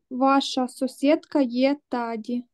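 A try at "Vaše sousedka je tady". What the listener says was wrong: Ваша сусідка є тади. Йо, тоді таке твердіше, тади.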